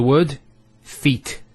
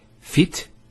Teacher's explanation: We don't say fit, we say feet. There's an elongation of the E sound. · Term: long vowel